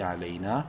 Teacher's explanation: الف مدہ ہے، نون کو ایک الف کے برابر لمبا کریں گے